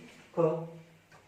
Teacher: कम श्वास लग रही है, कम ऊर्जा लग रही है, आसानी से आप बोल रहे हैं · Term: अल्प प्राण